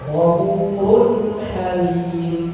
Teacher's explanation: Izhar ya tanwin bertemu dengan huruf ha. Dibaca jelas saja. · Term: Idhar